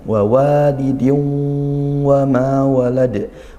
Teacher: Nah, kemudian di situ wanya yang kedua panjang, wawalidin wa ma walad. Wa yang kedua ini mad tabi'i, panjangkan satu alif ya, atau dua harakat.